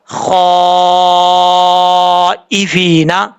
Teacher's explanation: خا حروف مستعلیٰ میں سے ہے، پر پڑھا جائے گا، اس کو بریک پڑھنے کی ضرورت نہیں ہے. اور یہاں پر فا کے بعد یا ہے، یا مدہ، ایک الف کی مقدار لمبا کر کے پڑھیں گے. اور جب وقف کریں گے یہاں پہ تو نون ساکن ہو جائے گا.